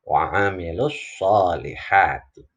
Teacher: Tapi karena ini adalah bacaan wasol sambung, maka terjadi yang pertama yaitu alif lam syamsiyah. Ya, ada alif lam yang nggak terdengar jelas. Lalu di sini ada huruf shad, ini huruf syamsiyah.